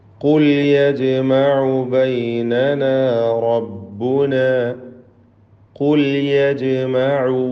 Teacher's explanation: ഖാഫ് തഫ്ഖീം ചെയ്യേണ്ട അക്ഷരമാണ്, തടിപ്പിച്ച് ഉച്ചരിക്കേണ്ട ഇസ്തിഅലാഇൻ്റെ ഹർഫുകളിൽപ്പെട്ടതാണ് ഖാഫ്. യജ്മഉ ജീമിൻ്റെ സുക്കൂൻ ഖൽഖല സുഗ്റ നൽകി ശബ്ദം ചലിപ്പിച്ച് ഹറക്കത്ത് പോലെ വ്യക്തമാക്കണം.